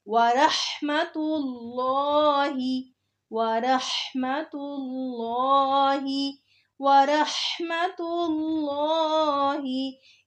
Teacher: वरहमतुल्लाहि वरहमतुल्लाहि वरहमतुल्लाहि, इसमें लफ्ज़ रॉ को भी पुर पढ़ना है, ज़बर की वजह से रॉ के ऊपर ज़बर या पेश हो तो रॉ को पुर करके पढ़ेंगे। उसके बाद हा को हलक के दरमियान से निकालना है। फिर लफ्ज़ अल्लाह आ रहा है और उससे पहले पेश आ रही है तो लफ्ज़ अल्लाह के नाम को खूब मोटा करके पढ़ेंगे।